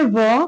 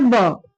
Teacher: व का उच्चारण दांत और ओष्ठ से ब का उच्चारण दो होठों के बीच।